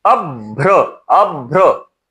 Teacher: अब्र का जब उच्चारण करते हैं तो भ के पहले अल्पप्राण यानी कि ब आ ही जाता है